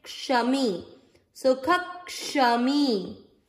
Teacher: इस अक्षर को क्ष, इसका उच्चारण कैसे करते हैं हम, आधा क और पूरा श, आधे क को यहां मिक्स करिए, क्योंकि आधा है वो पिछले वाले पूरे अक्षर के साथ जुड़ता है अधिकतर।